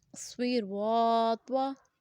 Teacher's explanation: اب را کو ہم نے پر پڑھا ہے، کیوں؟ کیونکہ را کے اوپر ہمارے پاس زبر ہے، جب بھی را کے اوپر زبر اور پیش ہوگی تو ہم را کو پر پڑھیں گے۔